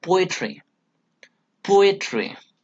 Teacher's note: One stressed syllable plus two unstressed syllable. The first syllable is stressed one. Okay, and the rest of the two syllables are unstressed. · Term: dactyl